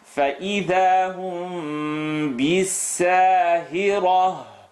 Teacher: When mim sukoon is followed by ba, the lips vibrate.